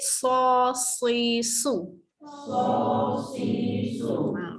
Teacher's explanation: Hujung lidah dekat bawah. Huruf sod, okey tebalkan sikit.